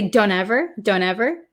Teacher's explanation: the t in don't become silent